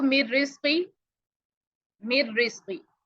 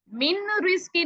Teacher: नून को बिल्कुल आपने बीच में से हजफ कर देना, बिल्कुल ही सोचे है ही नहीं, लिखा हुआ नहीं है आपके पास। · यानी आप मर्ज तो करेंगे लेकिन आपको गुन्ना की आवाज नहीं आएगी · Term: इदगाम, बिगैर गुन्ना